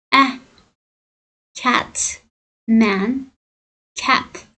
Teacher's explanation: agar a harfi yopiq bo'gʻunda boʻlsa, ah degan to'sni beradi.